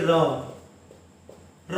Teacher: लुंठित व्यंजन यानी हमारी जीभा जो है कई बार लुढ़कती कुढ़कती है। जैसे बोलेंगे र, र बोलेंगे तो जीभा जैसे हमारी फेंक रही है र, तो ये लुढ़कती है र बोलने पर।